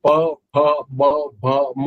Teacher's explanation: પ ફ બ ભ મ બોલશો તો તમારા બંને હોઠ ભેગા થશે અને જીભ ક્યાંય કશે લાગશે નહીં